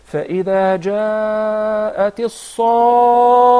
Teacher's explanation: In addition to the shadda on the letter kha, musaqqal, it's heavy and a lot of emphasis